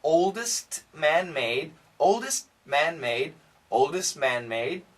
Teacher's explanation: if we say this really fast the T sound can disappear or we can keep it